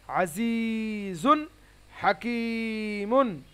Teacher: তানবিন নুন সাকিনের পরে হুরুফে হালকির 6টি অক্ষরের মধ্যে থেকে কোনো একটি অক্ষর হলে তানবিন নুন সাকিনকে বিনা গুণনায় তাড়াতাড়ি পড়তে হয়। তাহলে আজিজুন, জুন এরকম হবে না, জুন। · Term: ইজহার